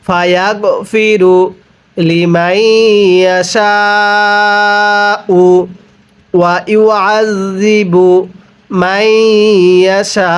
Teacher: ওয়াকফের সময় এই হামজাটিকে সাকিন দিয়ে পড়তে হবে, হামজায়ের উপর পেশকে বাদ দিয়ে পড়তে হবে